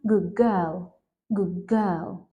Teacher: But when we say it faster, it may become good girl, good girl. So the d becomes a g. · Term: assimilation